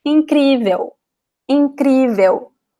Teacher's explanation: One is the stress of the E sound and also the L sound at the end. In Brazilian Portuguese words, we do not pronounce the L at the end. We pronounce like an U.